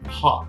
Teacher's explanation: esse O que não é exatamente O, ele é um O com uma pitadinha de um A.